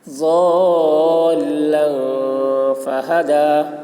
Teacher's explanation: تنوین کے بعد حروف اخفا میں سے فا آ رہا ہے، اس وجہ سے اخفا ہوگا۔ ضالا فہدا، دال کے اوپر کھڑا زبر ہے، کھڑا زبر برابر ہوتا ہے الف مدہ کے، اس لیے کھڑا زبر کو ایک الف کے برابر کھینچ کر پڑھیں گے۔